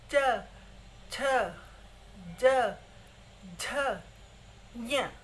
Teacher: जीभ जो है उच्चारण करते समय ऊपर तालु को छू कर आती है, तो इसलिए इनको तालव्य वर्ण कहते हैं।